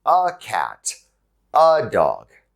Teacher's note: a is often pronounced uh by native english speakers so instead of a cat or a dog you'll hear a